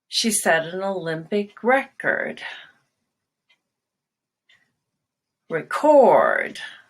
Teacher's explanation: So the noun, you start high on record and drop.